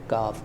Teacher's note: यह जबान की जड़ और तालू के सख्त हिस्से से अदा होता है · یہ زبان کی جڑ اور تالو کے سخت حصے سے ادا ہوتا ہے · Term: बारीक काफ